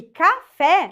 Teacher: a última sílaba que é mais forte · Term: oxítona